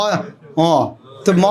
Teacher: वो हवा नाक से चले जाएगा, नाक बंद कर माँ बोलो, म आएगा नहीं। ओठ बंद करके वो हवा नाक से देना पड़ेगा तब तो उच्चारण होगा।